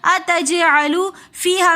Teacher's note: اتجعلو میں جیم حرف قلقلہ میں سے آ رہا ہے، تو اس لیے ہم جیم کے اوپر قلقلہ کر کے پڑھیں گے۔ اتجعلو فیہا میں یا مدہ ہونے کی وجہ سے ہم فی 1 الف کی مقدار کھینچ کر پڑھیں گے